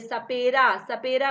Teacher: हमारी जो जीभ है वो किस में टच कर रही है, दांतों में टच कर रही है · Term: दंतव्य श